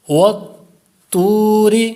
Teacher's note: واو مدہ ہے اور طا حروف مستعلیہ بھی ہے اس لیے پر کریں گے